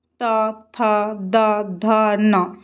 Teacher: ତ ଥ ଦ ଧ ନ ଦନ୍ତ୍ୟ ବର୍ଗୀୟ ବ୍ୟଞ୍ଜନ ଏ ପାଞ୍ଚଟିକୁ ଉଚ୍ଚାରଣ ପାଇଁ ଦାନ୍ତର ଆବଶ୍ୟକତା ଅଛି